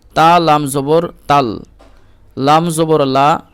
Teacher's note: লামের উপর তাজদিদ রয়েছে এইজন্য তাই এর সঙ্গে লামের ইদগাম ঘটাবো মিলন ঘটাবো